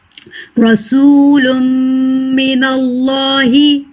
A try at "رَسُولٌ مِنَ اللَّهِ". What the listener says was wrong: थोड़ा सा और लाम पे हैवी. रसूलुम मिनल्लाहि.